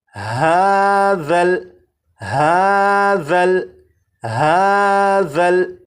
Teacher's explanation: اب اس لفظ کو پڑھیں گے، اور اس لفظ میں یہاں پر دیکھیں یہ ذال ہے، ذال کو نرمی سے پڑھیں گے، یعنی سی ٹی کی آواز کے بغیر پڑھیں گے، اور اس حرف کی سی ٹی کی آواز کو ختم کرنے کے لیے زبان کی نوک کو اوپر کے سامنے کے 2 دانتوں کے سرے سے جب لگائیں گے تو ذال کے اندر جو سی ٹی کی آواز ہوتی ہے وہ ختم ہو جائے گی۔ اب اس لفظ کو اس طرح سے نہیں پڑھیں گے ہازل ہازل، اس طرح سے نہیں، بلکہ ہاذل ہاذل ہاذل، 4 مرتبہ۔